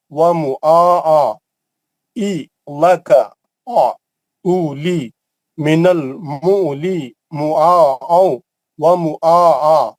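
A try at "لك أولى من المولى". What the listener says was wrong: آپ عین کا آواز نہیں نکال رہے نا. عین نکلنا. ای لکا اولی من المولی. عین کہاں ہے؟ عین نکل رہی تھی نا.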